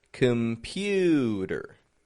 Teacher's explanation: Which is the stressed syllable? The middle. The pew. Pew.